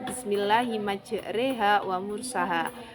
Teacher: imalah berarti sedikit membunyikan fathah ke arah kasroh atau setengah kasroh setengah fathah